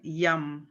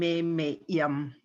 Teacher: the last y it kind of splits so we're saying that y twice